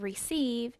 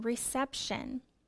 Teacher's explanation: reception is a noun also the vowel sound changes the long e sound of receive changes to a short e in reception